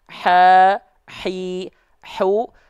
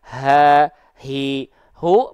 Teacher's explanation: pastikan hak kecil dilafalkan dari tengah-tenggorokan